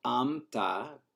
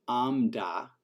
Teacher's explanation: Basically, you just keep the nasalization going and you retain the place of articulation. This does mean that there is a merger. So amta becomes amna and amda becomes amna as well.